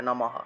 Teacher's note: বিসর্গ থাকায় পূর্ণহ উচ্চারণ হবে